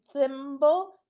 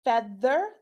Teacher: the th in thimble, thimble is unvoiced, feather is voiced